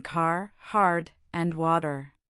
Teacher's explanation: Rhotic accents, like most American and Irish accents, pronounce the R sound wherever it appears in spelling, at the beginning, middle, and end of words.